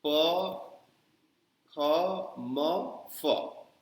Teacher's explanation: ये प वर्ग जो है वो होठों से निकलता है, इसीलिए अगर आपको हिंदी में प शब्द बोलना है तो बिना होठ सटाए आप नहीं बोल सकते हैं।